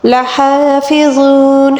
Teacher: ہا کو حلق کے درمیانی حصے سے ادا کیا جائے گا